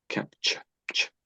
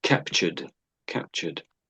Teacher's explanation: It's not really a T at all, is it? Really it's sort of a ch. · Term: ch sound